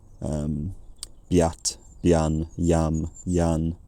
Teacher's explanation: boat, home, bone, had a rising diphthong in conservative Cumbrian